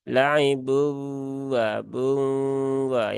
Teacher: Nun di sini itu jangan dihilangkan ya tetap di eh Suarakan dengan samar jadi separuhnya di Nun separuhnya di wau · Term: idgham bunah, idgham bigunah